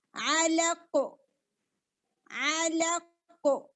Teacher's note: اب اگر ہم یہاں پر سٹاپ کرتے ہیں تو قاف کو ساکن کر دیں گے. اب قاف زیادہ ہیوی ہوگا اور قلقلہ کی آواز آئے گی